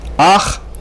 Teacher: We pronounce the vowel first and then the consonant, ach, and not ha.